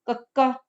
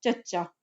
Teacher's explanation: ਜਦੋਂ ਤੁਸੀਂ ਚੱਚੇ ਦਾ ਉਚਾਰਨ ਕਰਦੇ ਹੋ ਤਾਂ ਉਸ ਵੇਲੇ ਜਿਹੜੀ ਤੁਹਾਡੀ ਜੀਵ ਉਹ ਕਠੋਰ ਤਾਲੂ ਨੂੰ ਸਪਰਸ਼ ਕਰਦੀ ਹੈਗੀ ਹ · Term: ਤਾਲਵੀ ਧੁਨੀਆਂ